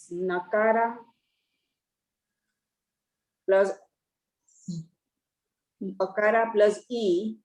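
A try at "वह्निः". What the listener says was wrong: Ihi, not e. Visarga is there. Then visarga you cannot say it from separately. Ihi.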